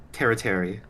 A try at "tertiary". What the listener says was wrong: tertiary? There's no I but before the T. Tertiary. It's like apiary.